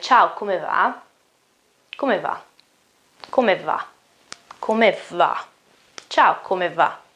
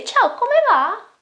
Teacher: But this is a question, and I say Ciao, come va? And you see that my intonation goes upwards.